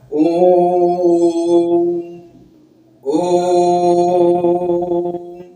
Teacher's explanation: वह स्वर होता है जिसका उच्चारण करते समय दीर्घ स्वर से भी अधिक समय लगता है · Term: त्रि मात्रिक स्वर